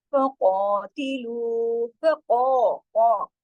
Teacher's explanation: फिर यहाँ मोटा पड़ा जाएगा कॉफ और दो हरकत खींचेगा